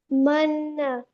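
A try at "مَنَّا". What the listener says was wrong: Yes, do gunna more. Manna. Yes, you hold the sound in your nose for 2 counts, okay?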